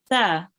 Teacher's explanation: Okay, so make sure to pronounce it with your tongue touching your upper front teeth